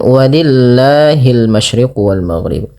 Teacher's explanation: Bila lafal Allah didahului dengan huruf berharakat kasrah, maka lafal Allah dibaca dengan tipis lamnya, tidak dibaca walillah, tapi dibaca dengan walillahil masyriq wal maghrib.